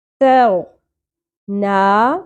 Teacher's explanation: یہ تا ہے باریک ادا ہوگا. تاؤ نا کھڑی زبر ایک الف کے برابر کھینچیں گے وَاسْتَغْنَا وَأَمَّا مَنْ بَخِلَ وَاسْتَغْنَا وَأَمَّا مَنْ بَخِلَ وَاسْتَغْنَا.